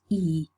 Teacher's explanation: We know that the fleece, E is long, it's tense, and so that when we say it's long and tense, that's given by the tenseness of the tongue